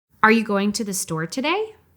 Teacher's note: when you're asking a question, your intonation rises a little at the end of the sentence to convey that it's a question